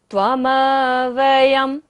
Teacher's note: य के ऊपर बिंदी है और बाद में क्या है? व। य र ल व होता है तो बिंदी का उच्चारण क्या होगा? म।